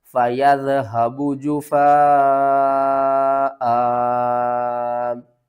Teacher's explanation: اس مد کا نام ہے مد متصل، اس کو ہم بڑی مد کہتے ہیں، اور 5 الف کے برابر آپ نے اسے کھینچ کر پڑھنا ہے